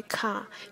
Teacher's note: If you hold your hand to your mouth and say car, you can feel a puff of air. This is known as aspiration.